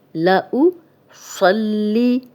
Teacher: ثم لَأُصَلِّ، لَأُ، یہ حمزہ کی پیش ہے، لَأُصَلِّ، صاد موٹا پڑھیں گے، صاد کی زبر لام سے ملے گی